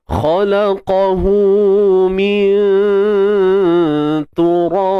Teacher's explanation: So kat sini kena baca tarqiq, nipis, sebab huruf ta huruf yang nipis.